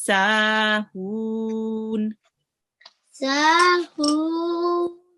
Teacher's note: this sa has an alif madya, and just prolong it for 2 seconds